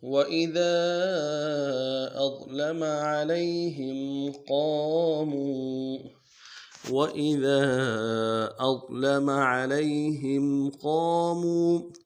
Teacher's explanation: وَإِذَا میں ذال کو نرمی سے ادا کریں گے، ذال کے بعد الف مدہ ہے، الف مدہ کے بعد مدہ عارضی ہے، دے الف میں آپ کھینچیں گے.